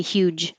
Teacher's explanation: you're going to hear a little ch noise, and that's fine. That's what will happen because the voicing turns off.